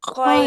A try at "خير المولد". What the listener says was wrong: আপু দেরি হবে না, হরফে লিন, লিনের হরফ। খয়রাল মাউলিদি